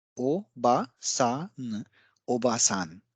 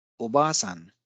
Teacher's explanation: an extra a vowel sound has totally changed the meaning of the word